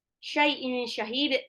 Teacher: tanwin ketemu shin ikhfa, haknya juga mad alif disukun.